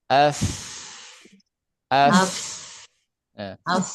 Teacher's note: F tuh, F. Nah, ini ujung gigi seri atas bertemu dengan punggung bibir bawah dan cuma ada aliran nafas, bukan sofir, bukan desis ya. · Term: huruf fa